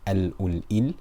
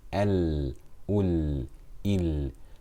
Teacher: The breath does not continue on the lam, but the sound does.